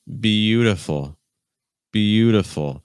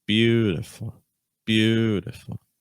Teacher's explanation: we have 3 syllables, but the stress is still on the first syllable.